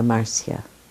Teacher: when i'm with the spanish-speaking people it's marcia the accent on the first syllable